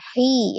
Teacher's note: hi-nya mad tabi'i ya, ya sukun sebelumnya kasrah di huruf ha, hi ya. Awalnya dibaca 2 harakat, tapi kemudian mad bertemu dengan 1 huruf yang disukunkan.